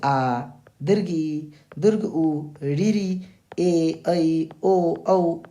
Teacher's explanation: ऐसे स्वर जिनके उच्चारण में दो मात्रा का समय लगे उन्हें बोलते हैं दीर्घ स्वर।